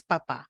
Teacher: primera es papá fíjense que la en la segunda sílaba en la segunda sílaba es más prominente que la primera